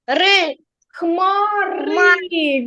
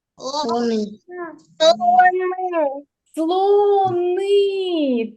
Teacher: в цих словах кактуси хмари лимони вовки слони Ми чуємо звук і в кінці слова